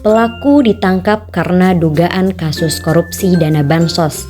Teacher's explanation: intonasi datar turun, terdapat pada kalimat berita atau deklaratif